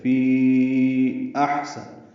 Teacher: فی احسن، حمزہ کو حا سے ملانا ہے، حمزہ اقصی حلق سے حا وسط حلق سے ادا ہوگا اور حا ساکن ہے، اس پہ سانس جاری رہے گی پڑھتے ہوئے، یعنی ہمس ہوگا۔